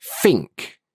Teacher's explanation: certain British accents will take the TH sound, like think or this, and they replace it with like an F sound or a V sound or sometimes a D sound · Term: TH fronting